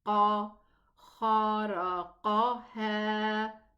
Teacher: And then the qaf is also elevated.